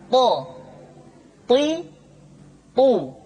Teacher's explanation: th diucapkan dengan menyentuhkan ujung lidah dengan gusi-gusi dua gigi seri bagian atas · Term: huruf th